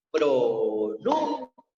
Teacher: Y cuando nosotros la separamos en sílaba, que decimos pronuncia, la sílaba tónica se encuentra en la sílaba nu